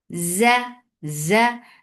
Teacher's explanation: This is z. It has buzzing sound of zed. It does not have the sound of S but it has zed in it.